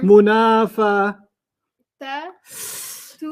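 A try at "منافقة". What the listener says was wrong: It's not a ta. It's a qaf.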